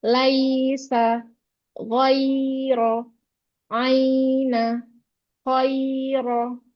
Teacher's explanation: Harfulin ini dia panjangnya 1,5 harokat.